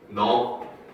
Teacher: 이 경우에는 비읍 때문에 된소리가 일어난 거기 때문에 경음화, 그 중에서도 교체의 경음화가 일어나는 거죠.